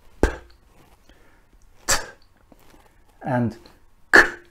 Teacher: a stop is produced when we stop the flow of air at some point in the mouth. We let a certain amount of air pressure build up behind the stop. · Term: stops